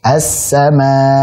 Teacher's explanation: Kita tekan hamzahnya, kenapa? Supaya hamzahnya tidak kabur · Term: nabar